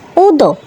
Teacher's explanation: হামজা পেশ উ, উ লাগবে দালের সাথে, দাল সাকিনে কলকলা প্রতিধ্বনি সৃষ্টি করে